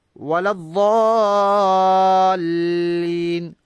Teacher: واد کے بعد الف ہے، یہ الف مدہ ہے، اس کے بعد لام ہے، لام پر شد ہے، زیادہ مد ہوگی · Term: مد لازم